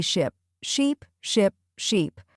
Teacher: mixing up ship and sheep. That short I versus the long e, it changes the whole meaning